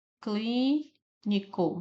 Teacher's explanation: Novamente, cli é a sílaba tônica e é uma proparoxítona.